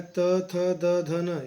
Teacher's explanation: त, थ, द, ध, न ये दांत से बोले जाते हैं। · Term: त वर्ग